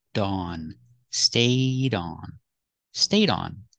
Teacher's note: Link the D and the on to link your words. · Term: link the sounds